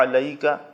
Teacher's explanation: حمزہ کی طرح علیک نہیں پڑھنا ہے، عین پر زور لگانا ہے.